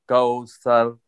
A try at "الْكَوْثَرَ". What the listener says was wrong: كوثر سين نہیں پڑھنی سا پڑھنا ہے سا سا تین نقطوں والا سا جو ہوتا ہے نا وہ پڑھنا ہے كوثر كوثر كوثر سر نہیں پڑھیں گے سی ٹی نہیں ہے اس میں كوثر